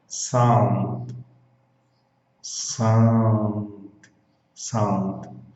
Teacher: Você está vendo como que o D ele praticamente não aparece? O som da palavra morre no D. Sound. Se você não tomar cuidado, devido ao português, né, o treinamento da mente para falar português, você vai colocar uma vogal no final dessa palavra, mas não pode.